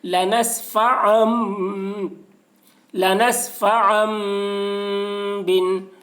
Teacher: تنوین کو میم سے بدل کر غنہ اور اخفا کے ساتھ پڑھیں گے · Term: اقلاب